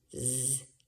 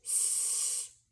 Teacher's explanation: you make the same mouth shape as you do with the letter s but you vocalize Z because with s it's just s it's just air coming out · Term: vocalized